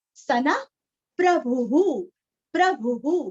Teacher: न के आगे विसर्ग का उच्चारण हल्का सा फ